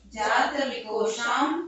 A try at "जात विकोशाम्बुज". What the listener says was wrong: इसको भी ऐसे पढ़ना है, इसको अर्थ होना चाहिए जात विकोशाम्बुज, जात विकोशाम्बुज मृदु भाषा। लेकिन लय में पढ़ने में यति के कारण वैसा नहीं आ रहा है।